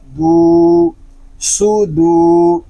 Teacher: دال ساکن کی آواز آئے گی اس میں کلکلا ہوگا جنبش ہوگی صاد پیش سو دال واو پیش دو سودو اس کو سودو